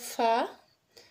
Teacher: सनाया उलिया का जो सिरा है आपका ऊपर के सामने दो दांत का सिरा है वो नीचे के होठ के अंदरूनी हिस्से से लगेगा